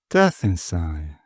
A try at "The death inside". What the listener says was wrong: You go a little higher pitch on the death part.